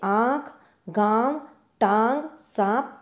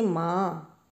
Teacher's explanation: अनुनासिक का उच्चारण नाक और मुंह से किया जाता है। अनुनासिक का अर्थ है नाक के पीछे से आने वाली ध्वनि जैसे मां।